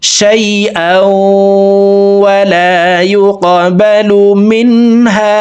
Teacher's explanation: গুন্নাহ, তানউইনের পরে ইদগামে বা গুন্নার হরফ ওয়াও আসছে, এই কারণে দুই জবর ওয়ালা হামজাটি তাসদীদওয়ালা ওয়ার সাথে গুন্নার সহিত মিলাইয়া পড়ব। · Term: ইদগামে বা গুন্নাহ